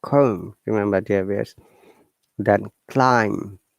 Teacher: If there's M before B at the end of the word, we must not pronounce it. We have to ignore it.